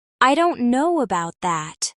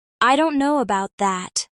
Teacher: Here, know and that are stressed.